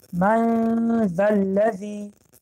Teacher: قاعده سیوم، در وقت تلفظ اخفا، در وقتی که ما مقدار دو حرکت داشته میخونیم، ما باید زبان را به مخرج حرف بعدی، حرفی که بعد است، تیار بکنیم. مثال حرف ذ که مخرجش بین دندان ها می باشد